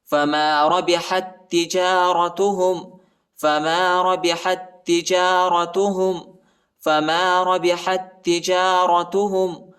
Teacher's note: ٹھیک ہے، یہ تا نہیں پڑھا جاتا، یہ تا ساکنہ ہے اور اس تا پر جو ہے شد آیا ہے. حا کو تا کے ساتھ ملائیں گے اور مضبوطی کے ساتھ پڑھنا ہے